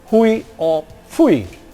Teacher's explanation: the offset is a little bit lower or well maybe level with the onset so it's not really up gliding anymore maybe it's level but it's sort of fronting diphthong here are